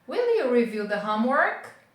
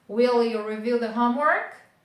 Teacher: Então, ela é uma rising intonation. A gente faz a entonação como se ela estivesse subindo.